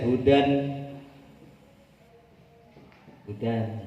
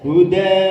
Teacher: saroba Hudan ketika wakaf dibaca Huda gitu jadi ba da gini jadi wakafnya dibaca panjang satu Alif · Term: Mad Iwat